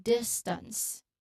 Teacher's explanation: the S sound blends smoothly in the T sound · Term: ST cluster